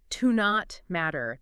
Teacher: It's pretty common, but in fast speech, it can get sort of squished together phonetically. Yeah, you might hear it almost like one word, like to not matter. The T in not kind of blends into the M.